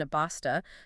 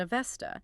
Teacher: The hard explosive B sound in a basta, spoken by ancient Persians, gradually softened over generations into the fricative V sound in Avesta, spoken by later generations. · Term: consonant weakening